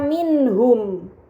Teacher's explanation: Kemudian terakhir pada kata minhum terdapat nun sukun bertemu dengan huruf ha. Ini dinamakan izhar halqi. Maka nun sukun harus dibaca secara jelas